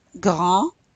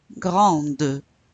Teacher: So you pronounce the final consonant when you add the E.